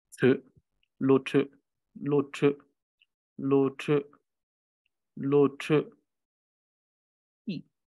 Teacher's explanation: Notice that now the sound is quite high, and the reason is that the sound needs to be cut rather than being stretched because of this particular suffix letter we have here.